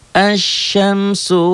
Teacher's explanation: alif lam samsiah tidak dibaca